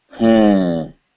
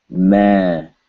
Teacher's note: If the bindu is at the end of a word, it is almost certain to mean not an N sound. It is not a nasal consonant, it is a nasal vowel.